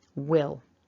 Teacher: we've got a w with the lips together, an I, short I, and a l